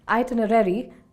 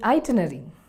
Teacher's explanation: So instead of saying itinerary, we end up saying itinerary. We need to keep in mind that the R sound is pronounced twice when saying the word itinerary.